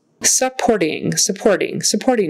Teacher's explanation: emphasis on the second syllable and um short u in the front supporting supporting that t is kind of a tap t supporting